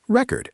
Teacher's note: If you stress the first syllable, it means a piece of music. Record. If you stress the second syllable, it means to write something down.